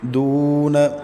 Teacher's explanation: دون، دال کے بعد واو ساکن اس سے پہلے پیش تو واو مدہ ہے۔ نون کو طرف لسان سے ادا کریں گے، مطلب کہ زبان کا وہ طرف جو دانتوں کے ساتھ لگتا ہے تو وہاں سے نون کو ادا کریں گے۔